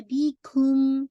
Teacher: اظہار میم شفوی، تب آپ کو میم ساکن کی آواز کو واضح کرنا ہے